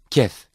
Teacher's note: Kef is articulated when the middle part of the tongue touches the palate. It is a weak consonant.